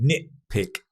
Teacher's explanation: Nitpick. Drop the T sound normally.